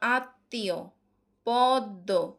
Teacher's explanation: সামান্য অনুনাসিক হয় মানে নাক দিয়ে বের হয় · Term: ম ফলা